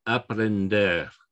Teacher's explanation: it ends in an r so the stress is going to be here on the final thing